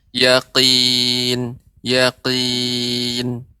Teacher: huruf qaf ketika kasrah, maka pengucapannya ya harus diperhatikan dia dengan pangkal tenggorokan. Ya, dengan tenggorokan bagian atas.